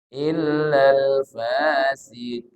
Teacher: Siqin qaf nisbi, ketebalannya menurun. Huruf qaf itu tebal, tapi ketika dia baris bawah, ketebalannya menurun.